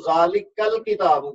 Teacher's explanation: کاف کو لام سے ملا رہا ہوں، الکتابوں کا حمزہ نہیں پڑھا جا رہا ، تو یہ چیز ہے اصل میں جو حمزۃ الوصل کہلاتی